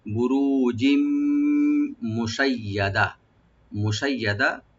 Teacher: মুশাইয়াদা, ইয়াটাকে double করে পড়বো আমরা, আর দাল ওপেন থাকবে। আর এখানে আমরা এখানে ওয়াকফ করবো, ওয়াকফ করা উচিত, তো ওয়াকফ করার সময় গোলতা এটা হা হয়ে যাবে, মুশাইয়াদা।